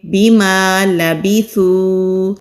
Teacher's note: زبان کی ٹپ اوپر والے سامنے کے جو دو دانت ہیں وہاں پر نرمی سے لگائیں گے تو سا ادا ہوگا